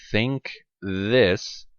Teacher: what you're doing here to pronounce and the sounds in think this the tip of your tongue is between your teeth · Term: dental fricatives